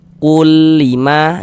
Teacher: bunyi nun sukun atau bunyi tanwinnya itu dimasukkan ke dalam huruf idgham bila ghunah, tapi dia tidak didengungkan. Kalau idgham bila ghunah dia tidak didengungkan, dimasukkan saja enggak didengungkan.